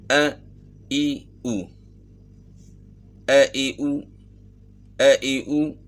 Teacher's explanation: آپ نے محسوس کیا کہ اس کے اندر جھٹکے کی آواز ہے، ا ای او، تو یہ حمزہ کی جو آواز ہے گلے کے آخر سے ہے، گلے کے آخر جو سینے کی طرف ہے۔